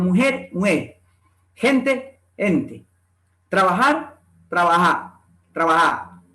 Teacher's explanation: En Andalucía, este fonema H se pronuncia con una aspiración suave, excepto en Jaén. Corresponde a las letras de la grafía J o G, seguida E. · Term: la aspiración de la J